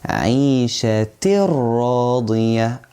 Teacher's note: We merge the tanween into the ra, but make sure you don't add ghunnah because lam and ra, letters of idgham, yes, but without any ghunnah. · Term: merging without ghunnah